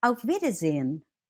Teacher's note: the en at the end, it simply becomes n. That's why you would hear Auf Wiedersehen.